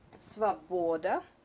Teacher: this O not under the accent is read like A.